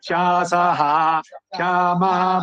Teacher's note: ಶಾಸಃ ಉಚ್ಚಾರಣೆ ವಿಸರ್ಗ ಪೂರ ಹೇಳಿ ಆಮೇಲೆ ಕ್ಷಕಾರ